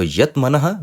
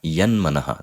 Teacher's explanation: It also changes into the anunasika of its varga. So yat manaha becomes yan manaha. The takara changes into nakara. That is the anunasika sandhi.